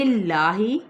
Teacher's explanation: اس میں جلالہ کا لام باریک پڑا جائے گا